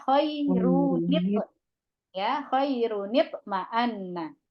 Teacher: apabila tanwin bertemu dengan hamzah wasol, maka bunyi nun pada tanwin diberikan harokat kasroh